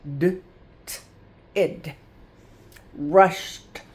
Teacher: I don't hear the e and I don't hear a d. I hear t a little t.